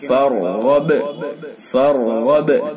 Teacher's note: دونوں را پر ہوں گے. غین کو بھی پر کر کے پڑھیں گے چونکہ حروف مستعلیہ میں سے ہے اور با کے اندر قلقلہ ہوگا کیونکہ با ساکن ہے.